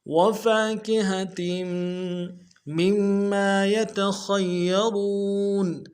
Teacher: تنوین کو میم کے ساتھ ملائیں گے، غنہ کرتے ہوئے میم کے اوپر تشدید زور دیں گے